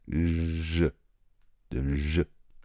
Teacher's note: il ressemble un peu au ch fort de chocolat, mais on va laisser passer l'air davantage.